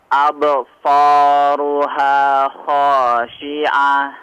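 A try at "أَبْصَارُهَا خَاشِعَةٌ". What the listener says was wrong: Jangan seolah ada jeda ya. Absaruha ya. Absaruha langsung setelah pantulan nyambung.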